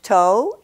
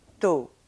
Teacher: all the speech organs are held much more front and more tense in French · they start and end on the same tone they don't float around like that there are no diphthongs in French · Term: pure vowels